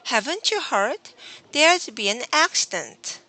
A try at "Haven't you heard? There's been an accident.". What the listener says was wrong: N. You forgot N. There's been an accident.